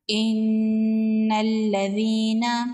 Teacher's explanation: یا مدہ ہے، ایک الف کے برابر کھینچ کے پڑھیں گے۔